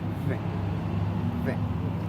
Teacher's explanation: The air is then pushed through to create the sound. The V sound is voice because when you make the sound, the vocal cord vibrates. The place of articulation for these sounds is labiodental because you use the lower lips and the upper teeth.